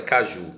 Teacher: caju é um exemplo de palavra oxítona, ou seja, a sílaba tônica ela está na última sílaba